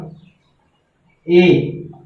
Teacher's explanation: ए यानी बड़ी ए बोलेंगे, थोड़ा मुंह खुला ही होगा